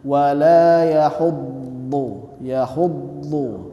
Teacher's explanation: jadi Sisi lidah kanan kiri itu ke gigi keraham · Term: Huruf tebal